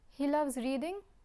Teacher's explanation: if I raise my voice at the end of the sentence, we have a question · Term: intonation